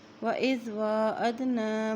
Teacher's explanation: واو کے پر کھڑی زبر ہے اس لیے ایک حرکت لمبا کریں گے